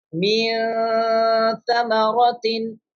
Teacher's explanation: After no sakin is the ta from Ikhfa letter. That's why we are doing nasalization.